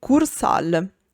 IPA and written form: ˈkursal (kursaal)